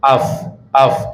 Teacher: Li'anal fa'a syafawiyun, karena sunnya fa dia syafawi, makhraj huruf syafawi, bibir